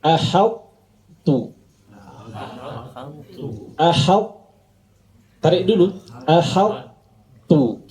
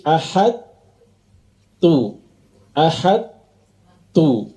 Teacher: menyempurnakan sifat idbaak pada huruf sebelumnya sehingga terlihat jelas bahwa sebelum huruf ta ada huruf th yang sukun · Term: idgham naqis